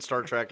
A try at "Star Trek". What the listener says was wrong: Trek. It's not TRAK, it's TREK. Trek.